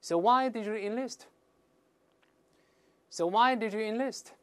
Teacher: 这个特殊疑问句后面是降调的